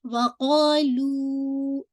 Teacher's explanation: لو کے لیے آپ کی بالکل ہونٹ گول ہو جائے. اس کو اسٹریچ کیجیے.